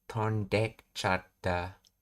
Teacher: In rapid natural speech, the vowel sound at the beginning of ichata is often dropped entirely and is attached to the verb in the te form. So tonde ichata becomes tondekchata.